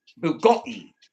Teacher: You got to hit a lot of O's. And you got to do a glottal stop on the T's